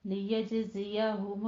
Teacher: لیجزیہ میں جیم کے اوپر قلقلہ کرنا ہے